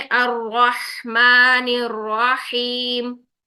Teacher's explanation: हा साकिन में आपने सांस को जारी रखना है, आवाज को जारी रखना है